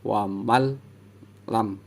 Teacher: Jadi ini kan nun sukun bertemu lam, jadi suara nun sukunnya nggak dibaca, jadi dari ma langsung masuk ke huruf la